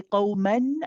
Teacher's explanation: in isolation, we would say qawman, and we would pronounce that you can hear the noon at the end.